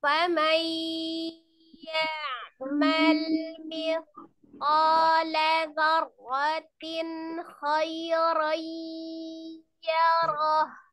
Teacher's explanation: Jadi nun sukunnya langsung masuk ke ya, ditasdidkan ke huruf ya-nya. Tapi biyakunna dengan kunna, jadi dengan dengung ya, dengan dengung berarti sama tadi ya, ditekan, ditahan, masukkan ke rongga hidung suaranya. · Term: idgham